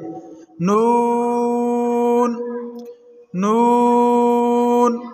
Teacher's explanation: नून को जबान का किनारा और अनयाब से स्नायत के दांतों की जड़ों से अदा करेंगे।